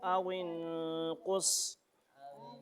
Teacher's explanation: वाव पे होंठ गोल होगा हर हाल में